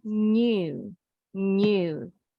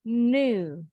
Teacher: kalau orang Inggris bacanya ada bunyi Y-nya. Ini bunyi lambang IPA symbol huruf Y. Jadi bunyinya new, new.